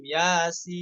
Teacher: perhatikan juga mad tabi'i ya dengan dua harokat. Terus pada huruf sinnya mad lazim